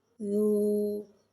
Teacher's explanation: واو ساکن سے پہلے پیش آ رہا ہے، واو مدہ ہو رہا ہے، واو مدہ کو ایک الف یعنی 2 حرکات کے برابر کھینچ کے پڑھیں گے